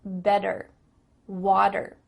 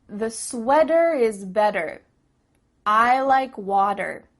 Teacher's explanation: in American English a t that's between two vowel sounds it doesn't always have to be a vowel but between two vowel sounds is going to change to a d